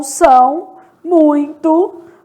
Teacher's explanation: são, muito, pronunciados aí pelo nariz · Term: ditongo